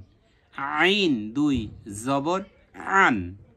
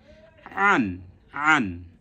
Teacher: কণ্ঠনালীর মাঝখান থেকে উচ্চারণ হবে